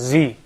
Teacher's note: the Z actually is a kind of alveolar sound. So that means the tip of the tongue doesn't come in between.